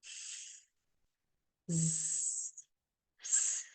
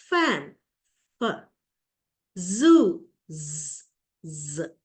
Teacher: The air escapes through a narrow channel with audible friction, friction that can be heard. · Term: Fricatives